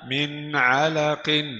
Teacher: نون ساكنة مظهرة قبل العين المفتوحة